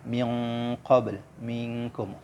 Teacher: samar berdengung, ini adalah ikhfa hakiki ya